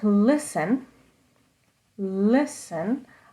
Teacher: the first part of the word it's kind of louder and longer that means it has stress